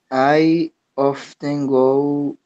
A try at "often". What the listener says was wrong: Often, often. You don't say the T. No, no tienes que pronunciar la T, sí.